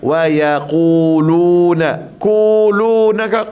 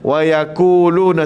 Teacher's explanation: Pastikan di sini wa lemut, ya lemut, qaf tebal.